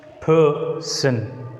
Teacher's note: Here in the disyllabic word person, the first syllable, the first 3 letters P-E-R is uttered with more force. Person. It's a strong one and it is a weak one.